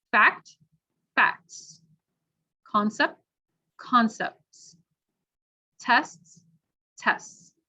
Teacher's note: when we add the s to make it plural we'll get rid of the t and have two s sounds